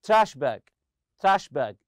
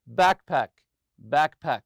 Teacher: you put the stress on the first part